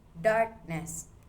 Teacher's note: The stress stays on dark.